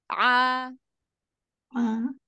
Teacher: fokuskan ke tengah tenggorokan huruf Ain